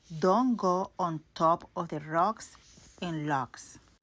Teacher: her go only had the first part of the O. Don't go instead of don't go.